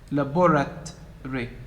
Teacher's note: So the first and third are reduced to schwa, the A and the A. And the last one is deleted, the O.